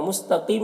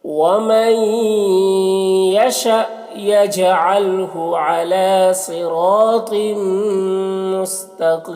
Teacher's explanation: مستقیم میں قاف کو پر پڑھیں گے، یا مدہ ہے اور یہاں پر وقف کی صورت میں مد عارض وقفی ہوگا